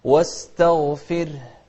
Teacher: شوف الغين المفخمة، لكن التاء اللي قبلها ما لها شغل فيها، مرققة